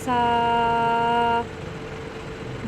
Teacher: जुबान की नोक को तालू के साथ लगा के नरमी से पढ़ेंगे